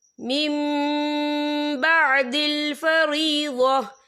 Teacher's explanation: हम पिछले मीम को अगले मीम के साथ मिलाकर पढ़ेंगे और हम यहाँ गुन्ना भी करेंगे। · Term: इकलाब